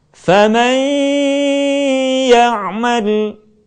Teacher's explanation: Selanjutnya, kesempurnaan di dalam membaca gunnah ketika kita mampu mengeluarkan sebagian suara kita melalui rongga hidung. Contoh, kalimat faman ya'mal akan lebih sempurna kalau sebagian suara kita keluarkan melalui rongga hidung.